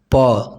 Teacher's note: प, देखिए प बोल के देखिए, दोनों ओठ सट रहा है, प, तो ये ओष्ठ से होता है